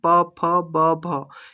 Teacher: प वर्ग जो है वह ओष्ठ से या फिर जब हवा निकलता है तो दोनों हमारा जो होठ है वह बंद होता है। हवा को रुकाता है और उसके बाद वो जब निर्गत होता है तभी प फ ब भ यह सब उच्चारित हो पाता है।